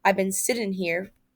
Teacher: he says sitting as if he dropped the final sound, so it sounds like sit in